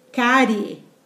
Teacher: E terminado em ditongo crescente, cárie, o I sendo semivogal e o E sendo vogal